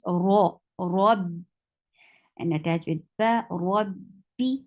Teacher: Ra is heavy here because this is with fatha. Whenever ra is with fatha, you have to make it heavy, and the sound of heavy ra is ra.